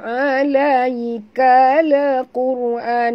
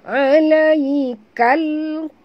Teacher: قال di sini alif lam qamariyah, bunyikan lam yang mati dengan jelas tanpa lantunan